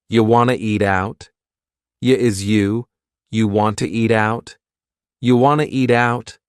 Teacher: we've dropped the question word completely